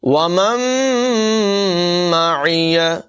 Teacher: نون ساکن کے بعد میم ہے، حروف یرمالون میں سے ادغام ہوگا، غنہ کر کے پڑھیں گے